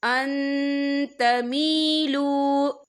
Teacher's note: يَتَّبِعُونَ الشَّهَوَاتِ أَن تَمِيلُوا، یا دیکھیں ان، یہاں نون ساکن ہے، نون ساکن کے بعد جو ہے تا آ رہا ہے، اور تا جو ہے اقفا کا ورڈ ہے، تو ہم یہاں اقفا کریں گے، نون ساکن کی آواز کو ناک میں چھپائیں گے۔